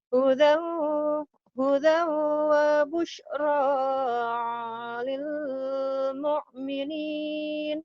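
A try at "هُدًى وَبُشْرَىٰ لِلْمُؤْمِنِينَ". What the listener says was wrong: busyra lil mu'minin. Ayo lagi, jangan madnya cuma 2 ketukan.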